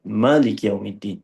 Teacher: Dia membuang alif pada dalam kalimah Maliki. Jadikan bacaan Maliki tu menjadi satu harakat. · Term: hazaf alif